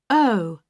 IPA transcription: əʊ